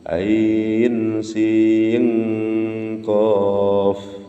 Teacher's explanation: nun sukun di dalam sin bertemu qaf, itu bacaan ikhfa, menjadi eng